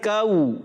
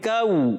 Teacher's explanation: کو میں واو جب آتا ہے تو ہونٹوں کو گول کرنا پڑتا ہے, پیش آتا ہے تو ہونٹوں کو گول کرنا پڑتا ہے, اور دو پیش آ جائیں تو بھی ہونٹوں کو گول کرتے ہیں. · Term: واو لین